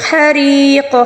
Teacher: ہا کو حلق کے درمیانی حصے سے ادا کریں گے